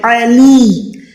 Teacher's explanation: یہاں پر لی کو ایک سیکنڈ لمبا کریں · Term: حروف مدہ